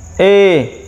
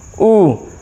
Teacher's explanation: अर्ध संवृत स्वर संवृत स्वर की तुलना में, संवृत स्वर की तुलना में मुख जो है वो अधिक खुलता है।